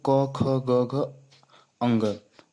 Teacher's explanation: दोस्तों, क वर्ग आपके कंठ से लिया गया है। कंठ, इसका उच्चारण स्थान कंठ है।